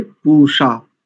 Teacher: ये पूषा नहीं है, ये मूर्धन्य षकार है